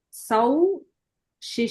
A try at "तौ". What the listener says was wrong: Tau, not sau. Sau is 100 in Hindi. It is tau, yes.